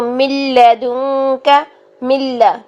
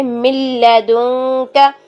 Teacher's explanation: نون جو ہے وہ لام کے اندر مرج ہو گیا ہے لیکن اس کی ساؤنڈ نہیں آ رہی، ٹھیک ہے، کیونکہ وہ غنہ کے بغیر ہے، ٹھیک.